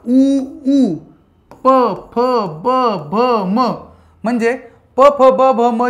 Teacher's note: खालच्या आणि वरच्या ओटांचा उपयोग करून आपण जे वर्ण उच्चारतो त्याला आपण ओष्ठ वर्ण म्हणतो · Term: ओष्ठ्यवर्ण